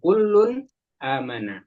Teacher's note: tanwinnya itu bacanya jelas tidak di samarkan. Misalnya kullun bertemu Hamzah kullun amana bukan kullun ditahan enggak ya harus langsung kullun amanah ya.